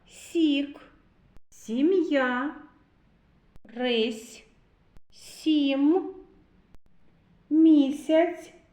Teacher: Ми чуємо звук сь м'яко Тому це М'який приголосний